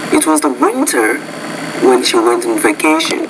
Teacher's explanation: You put more focus on winter because it's different from summer. That's contrastive stress.